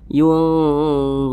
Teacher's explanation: cara membacanya itu disamarkan dan juga didengungkan. Akan tetapi dengung dan samarnya itu dia seimbang. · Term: ikhfa hakiki ausat